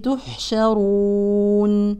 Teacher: الحاء ساكنه يعني فيها همس كذلك رخاوه